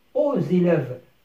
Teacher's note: الإكس أصبح زاد، سمعنا زاد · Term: liaison